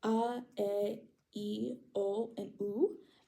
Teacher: these vowels are pure, which means that they don't glide or change in quality in the middle the way that English vowels can do. So they are very similar to Spanish vowels in that sense.